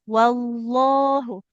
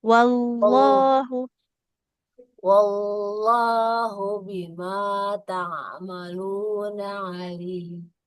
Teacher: Eh, wallah jangan wallah ya. Jadi tidak wau wau tapi wall ke lam tebal.